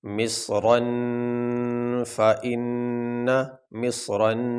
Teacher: یہاں را کے اوپر تنوین ہے، تنوین کے بعد آگے آ گیا یہ فا، یہ حروف حلقی میں سے نہیں، اس لیے ہم یہاں تنوین پہ غنہ کریں گے